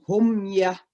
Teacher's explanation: Mim mati ketemu dengan wa. Itu namanya izhar syafawi. Jadi cara membacanya jelas di bibir kita.